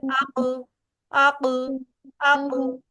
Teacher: حمزہ با زبر اب اب دیکھیں دونوں کو آپس میں ملایا، ٹکراؤ کیا دونوں کا اور فوراً الگ کیا، اس کو بولتے ہیں قلقلہ. جیسے قاف کی ادائیگی کے وقت ہم زبان کی جڑ کو اوپر تالو کے ساتھ لگاتے ہیں تو فوراً ٹکراؤ کیا اور فوراً نیچے کر دیا تو اس کو بولتے ہیں قلقلہ.